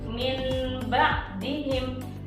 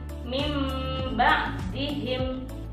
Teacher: Dalam konteks ini kita mengganti huruf nun sukun menjadi huruf mim sukun. Seperti contohnya min ba'dihim diganti menjadi mim ba'dihim.